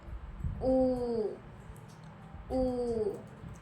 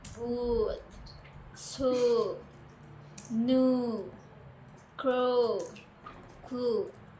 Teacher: The back of your tongue is raised towards the soft palate, and your lips are rounded.